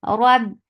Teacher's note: The shidda is strong, so you're cutting off the sound. Rab, the makhraj is cutting off the sound.